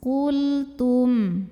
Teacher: lam sukunnya ini di sebut dengan lamutlak ya karena di hadapannya bukan lam bukan juga ro maka lam sukun ini dibaca jelas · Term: lam mutlak